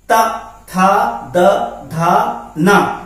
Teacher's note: अब आगे देखिए, दंत उच्चारण स्थान के अंतर्गत तावर को रखा गया है, ता था द धा ना, तो ये जीभ जब हमारी दांत को स्पर्श करती है तब उच्चारित होते हैं